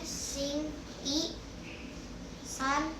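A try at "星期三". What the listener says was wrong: Singci san. Ci. Pakai C. Singci san.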